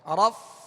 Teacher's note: اوپر کے دانتوں کے کنارے اور نچلے ہونٹ کے تر حصے سے فا ادا ہوتا ہے